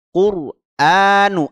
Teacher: lam bertemu huruf qof dibaca jelas huruf alif lamnya quranu Qur r-nya dibaca tebal karena didahului baris dammah kita tebalkan quranu a-nya di situ ada Mad thi'i pada Hamzah ya ini